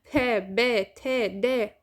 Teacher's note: أنا لما أقول plosive معناتها هاي أصوات انفجارية، أنا أحبس الهواء أطلقه مباشرة